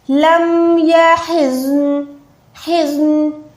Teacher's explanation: ज़ौद और नून दोनों को साकिन रखें